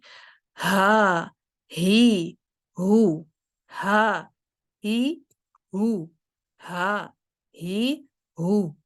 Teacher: आपका vocal cord पूरी तरह से खुला होगा, और आपने क्या करना है कि उसमें साँस को बहाल रखना है, ठीक है? उसमें साँस नहीं रोकनी।